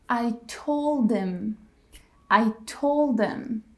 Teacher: we actually drop the h in the word him, his, and her.